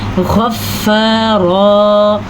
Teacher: غین کو پر پڑھنا ہے، فا کے اوپر جھٹکا یعنی شد ہے تو جھٹکے کے ساتھ پڑھی جائے گی